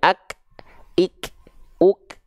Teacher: kalau kafnya dalam kondisi sukun kenapa seperti seolah lebih terdengar percikan nafasnya Karena setelah Kaf sukun Enggak ada enggak ada bunyi vokal harakatnya ak Tuh makanya dia Terdengar sangat e pop up suaranya ak